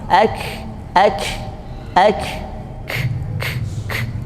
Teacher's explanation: makhrajnya itu tidak menutup kuat sehingga ada angin yang keluar, dan anginnya itu sifatnya banyak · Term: kaf